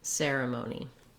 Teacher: In this word, you could try air, ceremony. Notice how the ser part of the word is long. Because it's stressed, we hold that longer and use the clear vowel. Then the amoni syllables are quicker, lighter, and they may have a reduced vowel.